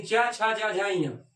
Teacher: च वर्ग का उच्चारण स्थान जो है क्या है तालू